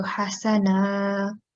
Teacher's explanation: And on this one, because we are making a pause here on this ta, so we will not read it as the tanween, full tanween, we'll read as one fatha. So hasana. And I think on this word, you forgot to do the kalkula rule on ba.